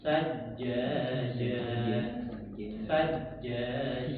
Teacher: usahakan huruf jim itu jangan mendesis